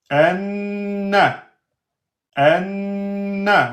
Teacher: On a dit que noun avec shadda, c'est deux temps.